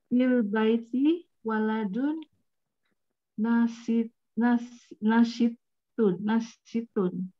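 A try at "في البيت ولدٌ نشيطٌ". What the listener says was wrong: Panjang dikit shinnya, shinnya panjang dikit.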